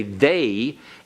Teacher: notice if you notice the way we pronounce it in English our jaw constricts slightly comes closer when we get to the end as though we're going to start to say you · it's not only the sound of the say they vowel but actually may have ended with this consonantal sound of a y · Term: diphthong